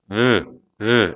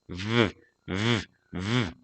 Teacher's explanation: the V sound is voiced and frictional meaning it relies on a steady flow of air and vibration of the vocal cords it's similar to the F sound